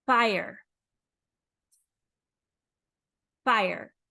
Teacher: Teeth touch the bottom lip.